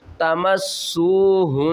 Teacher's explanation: ہا کو ہم نون سے ملائیں گے نون مشدد ہے غنہ کریں گے